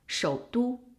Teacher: Starts at 2, a very low position, goes down even lower to the bottom of the tone and then goes up. But when it needs to change to a half third tone, it stops at 2-1. It stops at 1 and it doesn't go up to 4 anymore.